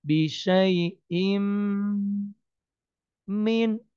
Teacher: tanwin ketemu mim idgham bi gunnah. Jadi ditahan masuk dan ditahan 3 harokat